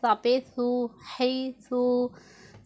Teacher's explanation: سا میں ہم نے سیٹی کی آواز نہیں نکالنی